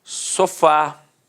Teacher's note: repare que a sílaba tônica é a última e é terminada de fato em a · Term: oxítona